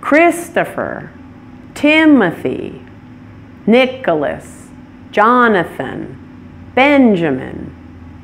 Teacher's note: has the primary stress on the first syllable for the men's names